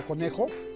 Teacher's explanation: la mayor fuerza de voz está en la penúltima sílaba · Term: palabra grave